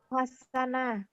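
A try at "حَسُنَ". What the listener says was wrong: Jadi mula-mula memang tertangkap kita hasanah karena biasa baris di atas. Ini yang enggak ada bertemu hasanah, tapi yang ada hasuna.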